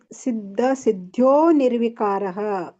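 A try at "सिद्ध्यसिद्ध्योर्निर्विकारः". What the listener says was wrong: ಅಲ್ಲಿ ನೀವು ಸಿದ್ಯೋ ಕೂಡಿ ಹೇಳೋರಾದರೆ ಸಿದ್ಯೋರ್ ಸಿದ್ಯೋರ್ ಹೇಳಬೇಕು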